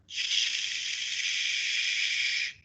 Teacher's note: the tongue is being pressed against the alveolar Ridge as we are right now and that is causing a friction of air